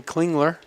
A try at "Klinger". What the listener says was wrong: The L is silent at the end of Klinger. Klingler. It's a common mistake. It's a common mistake. The L is silent.